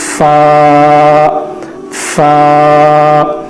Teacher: فا اوپر کے دونوں دانتوں کو نیچے ہونٹ کے تری والے حصے کو لگا کر پڑھنا ہے